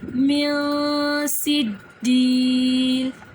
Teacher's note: گنہ کریں گے، ناک میں آواز لے کر جائیں گے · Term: اخفا